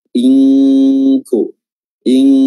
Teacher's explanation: Nunnya tidak disebutkan lagi, namun yang tinggal adalah gunnahnya saja, ya, suara yang keluar dari al-khayshum, dan menyamarkan huruf nun dilakukan dengan cara meletakkan makhraj kita pada posisi makhraj huruf setelahnya. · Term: ikhfa hakiki